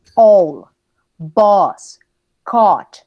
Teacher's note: Esta es como una O, casi también. Pero ojo, ustedes la van a pronunciar entre O, A, más o menos